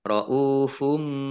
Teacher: dhammah bertemu dengan wawu, bacaan mat tobi'i, panjang 2 harokat